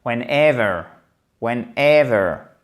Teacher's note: accent tonique ici, chers amis, sur le deuxième E.